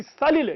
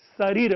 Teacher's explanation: तो रेफवती का यहां पर तात्पर्य है कि ल के स्थान पर र हो जाता है। एक बार फिर से मैं उसी उदाहरण को दोहरा रहा हूं कि सलिल जिसका अर्थ जल होता है, पानी होता है, तो इस प्राकृत में अगर आप कहेंगे तो वो सलिल जो है वह शरीर हो जाएगा।